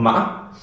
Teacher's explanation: The ma cracking one, it has a small crack, a small stop, and kind of goes up, but there's like a crack in the sound, ma.